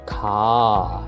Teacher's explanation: when we use the word car, we do not need to pronounce the R anymore because most Brits would use an H word instead by saying ka.